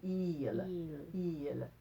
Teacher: the open, tall I is the open I. That's ill. We don't want that. We want the closed eel.